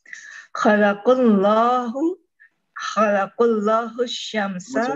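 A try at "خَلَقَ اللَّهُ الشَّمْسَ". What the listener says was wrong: Qafnya dibaca dengan fathah, jangan dengan dhamma.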